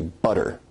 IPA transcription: bʌɾɹ